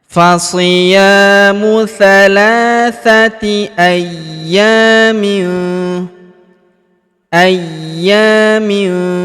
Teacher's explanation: Huruf ya kita tahan dan kita tekan karena terdapat tanda tasdid di atasnya dan kita panjangkan dua harakat karena alif di depannya ya.